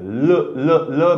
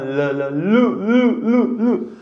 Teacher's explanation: हे बघा जिभेचा शेंडा दाताला लागतोय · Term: दंत्य वर्ण